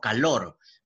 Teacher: Pero cuando no lleva tilde, como en este caso calor, pero la mayor fuerza de voz está en lor, se llama acento prosódico